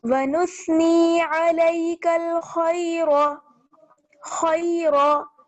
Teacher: खा को मोटा पढ़ना है, रा को भी मोटा पढ़ना है क्योंकि रा पर जबर है।